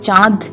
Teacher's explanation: নাসিক্য ব্যঞ্জন কোথাও কোথাও লুপ্ত হয়েছে এবং তার ফলে পুরো পদটা সানুনাসিক হয়ে গেছে